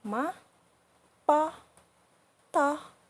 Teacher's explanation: The last one is the neutral tone, which is the toneless tone. So just like pronounce very weak.